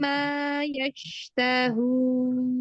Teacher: Mim tasydid, gunnah yang lama sama tingkatan gunnah yang pertama. Ma-nya terus mat 2 harokat tabii. Jangan dilewat.